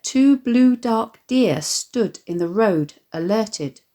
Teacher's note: the repeated plosive /d/, the heaviness of the sound perhaps suggesting the momentousness of the occasion